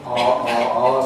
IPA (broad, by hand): ɑː